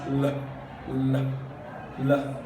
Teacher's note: The tongue makes contact with the alveolar ridge, and it closes the outgoing of the airstream. So the airstream passes through both sides of the mouth. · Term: lateral